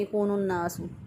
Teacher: بعض لوگ گنہ نہیں کرتے، گنہ کے بغیر یکون الناس پڑھ دیتے ہیں یکون الناس، تو غلط ہو جائے گا۔